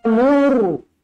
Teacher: mur ra dibaca tebal kerana sebelumnya berbaris hadapan.